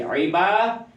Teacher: دال یہ متحرک ہے، آگے ہا ضمیر ہے، اس کو اشباع کریں گے، تھوڑا سا لمبا کریں گے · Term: اشباع ضمیر